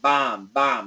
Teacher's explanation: It's not an ah, but an aw, okay? So if we don't pronounce the L, aw, not ah, aw, bomb.